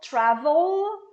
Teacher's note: Olha o L. I have this dark L.